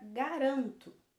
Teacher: na palavra garanto a penúltima sílaba é mais forte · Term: paroxítona